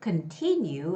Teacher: continue has the second syllable stress